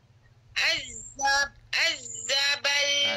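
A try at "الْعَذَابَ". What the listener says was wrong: Tak ada syadah kat zal tu Azabal saja.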